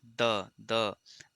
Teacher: दांत से इसका उच्चारण हो रहा है